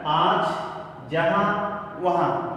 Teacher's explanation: उच्चारण करते समय हवा जो है नाक और मुंह दोनों से निकलती है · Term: अनुनासिक